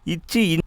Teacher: நாவுடைய இடைப்பகுதி அன்னத்தின் இடைப்பகுதியை தொடுவதால் உருவாகிறது.